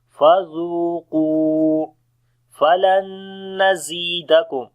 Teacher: Zal we read in soft sound, and also we long due to waw madda. Qaf we read in heavy sound, then we long due to waw madda.